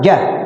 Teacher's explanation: Tapi kalau ja-nya dibaca 1 ketukan, ja, udah begitu, itu 1 ketukan, nggak panjang. Kalau ditahan dikit, itu 2 ketukan, 2 ketukan, 5 ketukan, 5 ketukan, 5 ketukan.